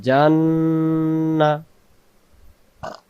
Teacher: জিম অক্ষর জিহ্বার মাঝখান থেকে শক্ত করে